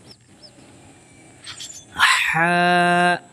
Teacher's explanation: جو ہا ہے وہ درمیان حلق سے نکلتا ہے